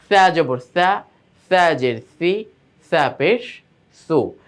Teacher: সায়ের মাখরাজ কি, জিহ্বার আগা দাঁতের আগার সঙ্গে লাগবে উপরের, আর সিনের মাখরাজটা কোথায়, জিহ্বার আগা নিচের দাঁতের পেটের সঙ্গে গিয়ে লাগবে।